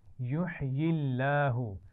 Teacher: لام جلالہ یعنی لفظ اللہ کے لام سے پہلے زیر ہے تو اس کو موٹا نہیں پڑھیں گے، باریک پڑھیں گے